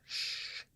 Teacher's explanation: the sheen, that is the palatal fricative